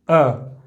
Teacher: ये अ जो है हमारा जीभ के मध्य भाग से बोला जाता है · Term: मध्य स्वर